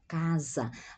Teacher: A pronúncia da S entre vogais é como a Z do inglês